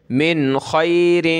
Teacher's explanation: حروف حلقی کے 6 ورڈ ہوتے ہیں، حمزہ ہا، عین ہا، غین خا، تو یہاں خا موجود ہے، اس لیے جب وہ آگے موجود ہو، نیکسٹ وہ ہو، تو اس سے پہلے نون ساکن پر ہم نے ناک میں آواز پیدا نہیں کرنی، ایزی پڑھنا ہے